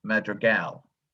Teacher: second baseman was drafted out of college the word was that his last name is pronounced madrigal accent on the last syllable